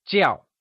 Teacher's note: Jiào is pronounced in the falling tone, also known as the fourth tone